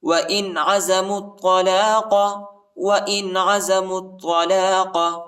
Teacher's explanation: میم کو طا کے ساتھ ملائیں گے، واو اور یہ دونوں الف اور لام نہیں پڑھا جاتا ہے، ان حرفوں پر حرکت نہیں، ٹھیک ہے۔